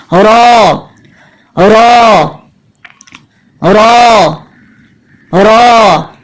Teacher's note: زبان کی نوک مسوڑے کو بالکل بند نہ کر دے بلکہ زبان کی نوک مسوڑے پہ لگے. اس طرح کی نوک کا بالکل درمیانی حصہ مسوڑے سے تھوڑا سا دور ہو جائے گا اور اب اس جگہ سے آواز باہر آئے گی رو رو رو رو.